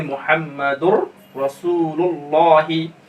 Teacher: तनवीन में दो पेश है, उसके बाद रा आ रहा है, तो यहाँ पर क्या होगा, इदगाम ताम बिला गुन्ना होगा और इसमें गुन्ना नहीं होगा